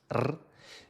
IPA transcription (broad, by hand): r